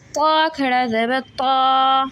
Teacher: موٹا کریں گے زبان کی جڑ اوپر تالو سے لگے گی